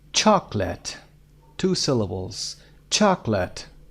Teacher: chocolate, the first syllable is stressed. استرس روی سیلابل اول.